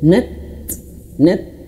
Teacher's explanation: In kanat illa nat, huruf ta tuh dialirkan anginnya, nat. Tapi anginnya tuh caranya tuh ditahan dulu.